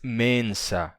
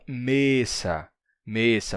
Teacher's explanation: Outra coisa interessante é essa redução do ns para um simples S, bem constante no português, né? Então, mensa do latim nos dá mesa em português, né?